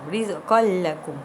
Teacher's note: Tanwin dimasukkan ke dalam huruf lam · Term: idgham bila gunnah